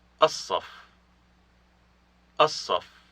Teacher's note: There is no L sound here because it has assimilated to the sod